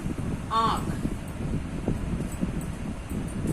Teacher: इसका उच्चारण करते समय हवा मुख के साथ साथ नाक से निकलती है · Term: अनुनासिक